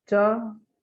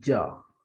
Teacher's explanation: Cha is voiceless and ja is voiced.